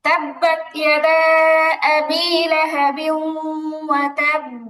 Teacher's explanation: কলকলার হরফে তাসদীদ থাকলে ওয়াকফ করলে উচ্চারণটা শক্ত হয় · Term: কলকলাটা শক্ত